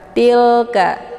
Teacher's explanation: lam sukun ini merupakan lam makrifah dibaca tipis jadi cara bacanya dialirkan saja tidak boleh dipantulkan